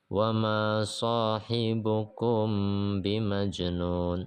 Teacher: Nah, ini ikhfa syafawi ya. Dia samar-samar dengan dengung.